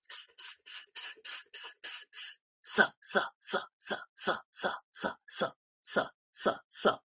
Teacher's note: দন্তস্য হচ্ছে দন্ত, ত বর্গের মতো, ত থ দ ধ, সিস দেওয়া